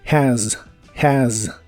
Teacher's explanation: es una mezcla del sonido e y el sonido a y la s del final en teoría es el sonido de la z inglesa Así que es vibrante Z pero en esta palabra la vibración es muy leve